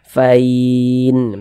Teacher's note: yang awalnya huruf lin berubah menjadi mad lin. Karena dia berubah menjadi mad, maka dibaca panjang